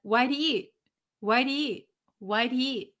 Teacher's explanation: So you might know that when we have the word he or them, we kind of eliminate the first letter. So he often becomes just E.